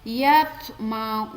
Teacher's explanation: Cara membaca qalqalah tersebut yaitu dengan pantulan tidak terlalu kuat. Jadi kecil ya, jadi tidak terlalu kuat.